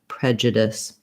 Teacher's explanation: The letter U in prejudice doesn't say the oo sound because the J syllable is unstressed, so it's reduced. So I'll write it here a little smaller with the UH for that vowel schwa, the sound in that syllable, prejudice.